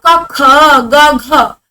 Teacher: क में कम वायु लगी तो अल्प प्राण ख में ज्यादा वायु लगी, महाप्राण ग में फिर कम मेहनत लगी, अल्प प्राण घ में फिर ज्यादा मेहनत लगी, महाप्राण।